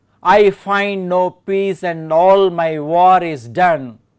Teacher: The first one I is unstressed, the second one find is stressed. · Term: iambic meter